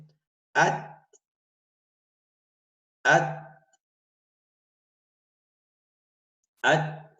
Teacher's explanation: تا اس کو باریک کرنا ہے بغیر قلقلے کے پڑھنا ہے اسے